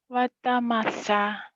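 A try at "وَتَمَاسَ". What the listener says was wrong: Watamasya. Shin ya. Watamasya.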